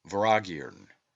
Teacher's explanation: first syllable inflected it is an alteration of the word murthiana the t is silent and M is inflected as is common in the Celtic and is given the sound of V